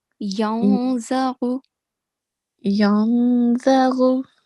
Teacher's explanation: we are not going to manifest the sound of noon sakin